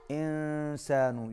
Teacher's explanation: یہاں پر اخفا ہو رہا ہے، آواز ناک میں جا رہی ہے